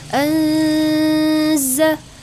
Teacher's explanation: nun mati bertemu dengan huruf za itu disebut dengan ikhfa hakiki, harus didengungkan